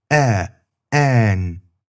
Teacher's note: It's similar to English's a as in an, but the tongue is a bit higher in the mouth.